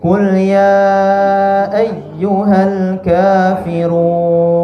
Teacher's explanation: Ketika kita bertemu ya tasydid, jangan kita luruskan, kita tekan.